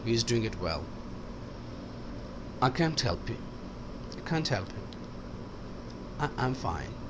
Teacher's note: جملے جو اکثر ختم ہوتے ہیں اس میں بھی فالوئنگ انونیشن ہوتا ہے